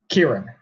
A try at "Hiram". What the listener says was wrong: Hiram with an H. Hiram.